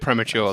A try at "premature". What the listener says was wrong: you're putting the emphasis on the wrong salable